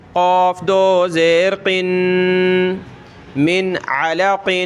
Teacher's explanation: گلے سے نکالتے ہیں، قاف اس طرح موٹا کر کے بڑا کر کے ، اور اس کے نیچے دو زیر پڑھیں گے، قاف دو